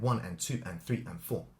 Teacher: the ands are not emphasized it's the one two three four